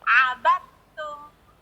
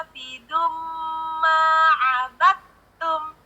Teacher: tak dengan da itu satu ibu, satu makhraj di belakang gigi seri atas. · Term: idgham mutajanisain